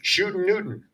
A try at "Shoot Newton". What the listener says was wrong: Shoot Newton. No G.